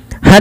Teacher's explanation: pada dasarnya tanwin itu dibunyikan dengan suara nun yang dimatikan. Han seperti ini sama dengan han seperti ini.